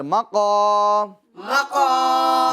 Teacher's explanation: حروف مدہ کو ایک الف کی مقدار یعنی 3 حرکات کے برابر کھینچ کر پڑھیں گے